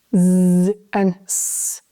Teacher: Z is made by vibrating your vocal chords, while s is only with air.